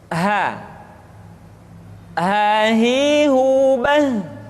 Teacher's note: dikeluarkan dari tenggorokan yang terjauh